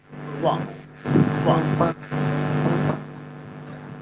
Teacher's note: দাঁত মানে উপরের দাঁত আর নিচের ঠোঁট। ব ব, দেখুন যখন উচ্চারণ করবেন উপরের দাঁত আপনার নিচের ঠোঁটে টাচ করবে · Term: দন্ত ওষ্ঠ